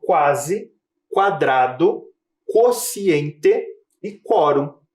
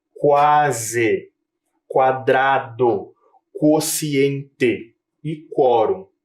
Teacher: A semelhança é que a letra U tem o seu fonema bem destacado.